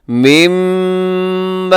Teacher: यहाँ मीम मुशद्दद है, यहाँ पे गुन्ना करेंगे आप और लंबा करेंगे, साथ अलिफ है, अलिफ मद्दा है।